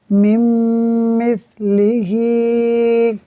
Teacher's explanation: यहाँ देखिए नून साकिन के बाद मीम हुरूफ यरमलून में से है, इदगाम होगा यानी मीम को मीम से मिलाएंगे गुन्ना करते हुए